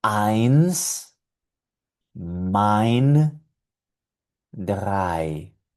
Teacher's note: La E con la I en alemán siempre va a sonar ay.